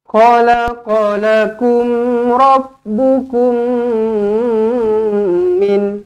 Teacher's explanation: Idgham mislain. Jumpa dengan mim sabdu. Terus rapatkan bibir. Dengungkan dua harakat.